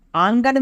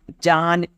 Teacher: पहले नून की आवाज़ नाक से आती है, ये नून गुन्ना की मिसाल है।